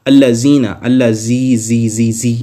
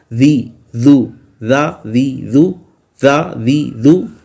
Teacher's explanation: ذال میں اس میں سیٹی کی آواز نہیں آئے گی، اس کو یہ یوں نہیں کرنا، زا یوں نہیں کرنا، اللہ زینا، اللہ زی، اس میں دیکھیں سیٹی کی آواز آ رہی ہے، سیٹی کی آواز نہیں آنی چاہیے۔